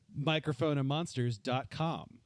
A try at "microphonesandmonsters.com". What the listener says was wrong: said microphone. You said it singular.